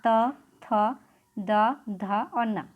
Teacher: फिर है ऊपरी दांतों के निकट से यानी कि जीभ हमारी जुबान जो होती है वो दांत से टच करती जाती है